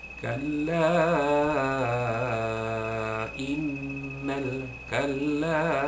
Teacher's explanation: Kalimah yang berbeza, dia jadi mad jaiz mufasil. Hendaklah dibaca huruf mad itu 4 atau 5 harakat. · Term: mad jaiz munfasil